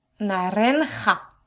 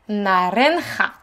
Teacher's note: Oui, c'est ça, vous avez les deux sons. Le R roulé et le J.